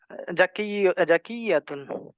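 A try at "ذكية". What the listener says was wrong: জাকিয়াতুন না, জালের উচ্চারণ জাল, জিহ্বাটাকে জাকিয়াতুন শুধু একটু বের করবেন, বের করে উপরের দাঁতের মাথার সাথে লাগাবেন, আগার সাথে লাগাবেন জিহ্বাটাকে।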